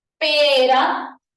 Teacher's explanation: la punta de la lengua choca una sola vez en el alveolo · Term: vibrante simple